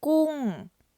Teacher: we've got a falling tone in the first word